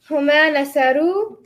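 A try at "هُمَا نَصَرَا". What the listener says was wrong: Huma is not nasaru. Huma rhymes with the word that you say after it. Huma nasara.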